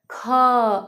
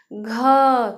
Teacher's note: ख जब बोलते हैं तो लास्ट में हमें लगता है कि ह बोल रहे हैं। कोई और भी एग्जाम्पल देख लेते, घ जैसे, घ, तो लास्ट में हमें क्या लग रहा है कि लास्ट में हम ह निकल रहा है हमारा, ठीक है। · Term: महाप्राण